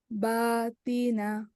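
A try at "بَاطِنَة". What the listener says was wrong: এটা তিনা, কি হবে? এটা হেভি লেটার, তাহলে কি হবে? বা তুই, তুই, মানে মুখটা একটু গোল হয়, বা তুই না।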